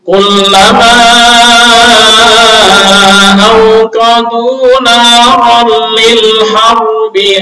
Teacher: Al-harbi di sini sifatnya hanya tafkhim, nggak ada sifat gunanya, nggak ada. Beda dengan mir rabbik, itu gom bila gunah, tapi ada tambahan dari selain itu gom itu, yaitu di tasydid, di sifat takrir dari sifat ra.